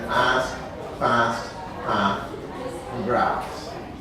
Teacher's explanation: one of the most distinctive features of Eastern New England speech is broad A